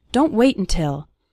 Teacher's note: We almost continue the word wait right into the N sound.